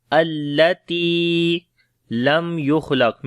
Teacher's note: میم کے اوپر اظہار شفوی ہوگا اور میم کے اوپر توسط بھی ہے